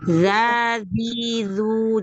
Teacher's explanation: Jadi makhrajnya ujung lidah yang ketemu dengan dua gigi seri atas, ya. Jadi dia nempel. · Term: huruf za